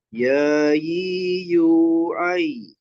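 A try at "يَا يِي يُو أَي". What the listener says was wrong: ai-nya bukan pakai ain ya, pakai hamzah. Ya yu ai.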